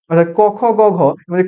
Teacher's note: ক হল অল্পপ্রাণ খ হল মহাপ্রাণ গ হল অল্পপ্রাণ ঘ হল মহাপ্রাণ